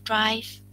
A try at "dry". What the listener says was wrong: Dry. Not drive, just dry. No F, just dry.